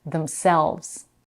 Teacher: The first syllable in the compound reflexive pronoun is also reduced to them, and the stress is on selves